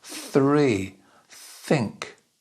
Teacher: for this sound the tongue is in between the top and bottom teeth and just sticking out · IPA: /θ/